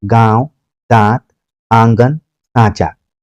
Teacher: चंद्रबिंदु को भाषा विज्ञान की शैली में हम अनुनासिक बोलते हैं। ऐसे स्वरों का उच्चारण नाक और मुंह से होता है और उच्चारण में लघुता रहती है